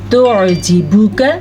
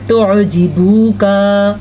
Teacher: اکثر لوگ پڑھتے ہیں توجیبو کا، با کو بھی لمبا کر دیا اور خواہ مخواہ کاف کو بھی لمبا کر دیا۔ نہ تو ہم با کو لمبا کر سکتے ہیں اور نہ کاف کو۔ اور کچھ لوگ یہ بھی غلطی کرتے ہیں کہ چھوٹا کرتے کرتے جھٹکا نکال دیتے ہیں، جیسے کہ توجیبو کا نہیں، ایسے بھی نہیں، توجیبو کا آرام سے، لیکن اس کی مقدار لمبی نہیں کرنی۔